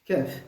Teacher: Entre le milieu et la racine de la langue.